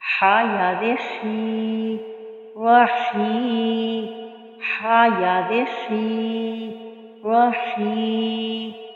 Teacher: یہاں پہ یا مدہ ہو رہا ہے اس لیے اس کو ہم نے کھینچ کے پڑھا ہے ایک الف کی مقدار کے برابر